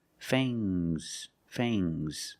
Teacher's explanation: Use a long A plus the nasal sound and a soft G.